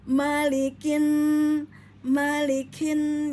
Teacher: pada Nun tajibul gunah wajib ditahan dan dengung dua harakat Ya ditahan dua harakat ya didengungkan dua harakat